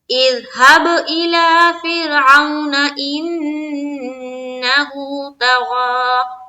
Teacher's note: لام میں کھڑا زبر ہے تو ایک الف کی مقدار کے بقدر کھینچیں گے